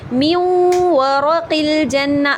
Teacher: نون کی بھی آواز آ رہی ہے اور واو کی بھی شامل ہو رہی ہے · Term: ادغام بھی غنہ ناقصہ